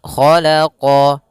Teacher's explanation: Kha isti'la, huruf kha pangkal lidah kita terangkat. Khalaqa sama qa juga huruf isti'la pangkal lidah terangkat.